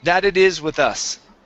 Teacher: switch those t's to d sounds